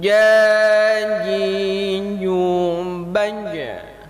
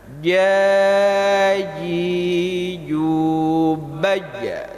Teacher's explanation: Huruf jim ini letaknya di tengah dan nantinya cara keluarnya itu tidak berangin.